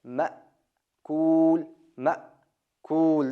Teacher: Bu yerda hamza bor. Ma' kuul, ma' kuul deb biroz to'xtaladi.